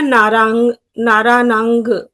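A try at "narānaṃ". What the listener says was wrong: Naranang. Don't say ga. Naranang. Naranang. Not ga. You say ga. Don't say ga.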